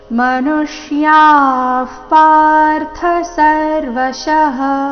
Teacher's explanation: ವಿಸರ್ಗದ ಉಚ್ಚಾರಣೆ ಇಲ್ಲಿ ಅರ್ಧ ಫ ರೀತಿ ಬರಬೇಕು. ಮುಂದಿನ ಶಬ್ದ ಪಾರ್ಥ ಪದಿಂದ ಶುರುವಾದ ಕಾರಣ ಮನುಷ್ಯಾಃ ಪಾರ್ಥ ಸರ್ವಶಃ.